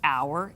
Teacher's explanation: h when it has an o after it quite often will be silent